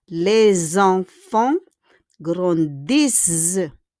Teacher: Les, avec un S, we need to connect with enfant. And we do it at liaison. And it should be pronounced comme un Z. We need to pronounce it po sa Z.